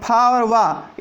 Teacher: ये दोनों दंत ओष्ठ, दांत और ओंठ दोनों का प्रयोग करने पर ये बोले जाते हैं